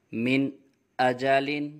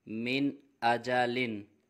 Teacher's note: یہاں نون ساکن کے بعد حروف حلقی میں سے حمزہ آ رہا ہے، اس لیے یہاں پہ اظہار ہوگا، غنہ نہیں کریں گے۔